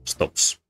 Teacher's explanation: the p is non-voiced and then you stay non-voice for the s